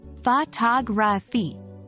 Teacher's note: the stress pattern is secondary primary unstressed unstressed fagi notice how the second syllable is stressed more than the · Notice how the second syllable is stressed more than the first, which is the secondary stress, and the last two syllables are unstressed.